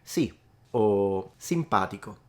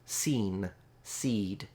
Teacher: The E sound, it's still short compared to seen, seed.